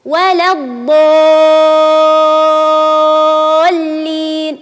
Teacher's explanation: ولا الضالين تمد ست حركات فهو مد كلمه لازم مثقل